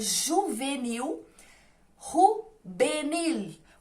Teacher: Entrou a L, a J e a V, porque a letra V, gente, aqui não existe. A gente fala o V com som de B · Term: V vira B